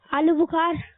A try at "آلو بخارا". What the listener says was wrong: آلو بخار، بخار نہیں ہے میرے مدنی منع، بخار نہیں ہے، آلو بخارا ہے، آلو کو کر دیا بخار، یہ کیا ہو گیا بات؟